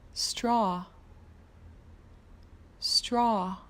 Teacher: the word straw adds an AW and for that sound you need to drop your jaw